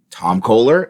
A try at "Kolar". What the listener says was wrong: Tom Kohler is Kolar, like polar or solar, but with a K. It's not like the faucet.